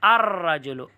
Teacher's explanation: سے را نہیں ہے، تو معلوم ہو را شمسیہ میں سے، جب شمسیہ میں سے ہے تو لام کو را میں مدغم کر کے پڑھو